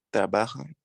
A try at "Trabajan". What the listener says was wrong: Trabajan. Esa pronunciación de N al final no es como la pronunciación de M, por ejemplo, en trabalham de portugués. Ese trabalham, ustedes hacen una pronunciación anasalada, sonido nasal.